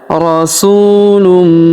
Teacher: Afaullama jaakum rasulum. Kemudian huruf su kita panjangkan dua harakat karena terdapat wau sukun di depannya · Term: panjangkan 2 harokat